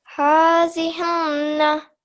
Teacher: So keep the n sound for longer. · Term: nasal sound